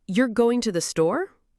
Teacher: For example, say the phrase, "You're going to the store with a rising tone at the end. It's a question, right?